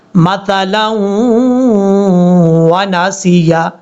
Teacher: لام کو جب واو سے ملائیں گے تو یہاں پہ ادغام یرملون کا غنہ ہوگا ایک الف کی مقدار